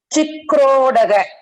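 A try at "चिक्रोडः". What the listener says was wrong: So probably due to the accent of Tamil, maybe. So chikrodaha, that visarga sounding ending sound was not very accurate, but that should be fine. Chikrodaha. So just ensure that that is correct.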